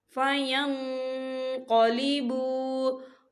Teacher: نون ساکن کی آواز کو ناک میں چھپائیں گے